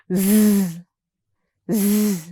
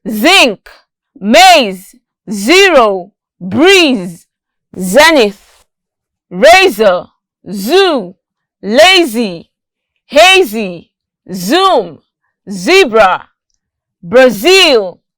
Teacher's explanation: while air escapes through the center of our tongue like this note that this sound is voiced because there's a vibration in our voice box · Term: z sound